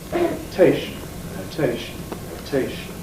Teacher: The T is now syllable initial, so we get strong aspiration.